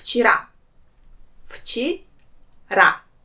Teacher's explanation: there are two syllables in this word and the last one has stress · There are 2 syllables in this word, and the last one has stress. Вчера. And here in this word, the sound V will pronounce as its voiceless counterpart sound F.